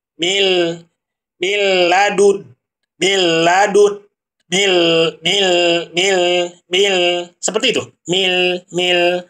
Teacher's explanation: Apabila nun mati bertemu dengan lam, maka tidak boleh suaranya masuk ke dalam hidung. Caranya adalah cara kita tahu suara itu tidak masuk ke dalam hidung, maka ditutup hidungnya. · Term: idgham bila gunah